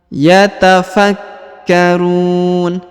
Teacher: Huruf K ditahan dan ditekan karena terdapat tanda tasdid